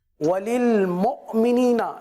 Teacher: حمزہ ساکنہ میں جھٹکا ہوگا، اور یاد رکھیے پیش میں ہونٹ گول ہوتے ہیں